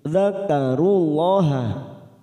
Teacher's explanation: lam jalala yang didahului dum kita baca tafkim